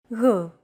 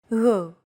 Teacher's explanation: It's like a very soft, continuous, and loosely held G, almost as if you're gargling, but don't make it sound too throaty.